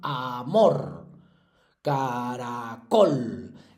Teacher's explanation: Bueno, para eso hay que recordar lo que eran las palabras agudas, que son las que tienen eh el golpe de voz, la fuerza en la última sílaba